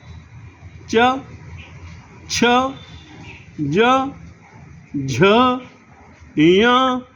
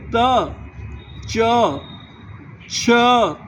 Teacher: जब आप च बोलते हैं तो आपकी जबान तालू के नजदीक होती है।